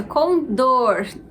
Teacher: Então, a sílaba mais forte é dor. Logo, a gente tem uma palavra oxítona.